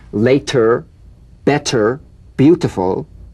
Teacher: the medial T becomes a soft D alright it's not a complete D but it goes toward a D